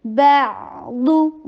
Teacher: با کے پر ضمہ, ہونٹوں کو گول